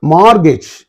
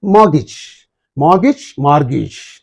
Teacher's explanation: R is silent in the British English, but not in the American English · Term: British pronunciation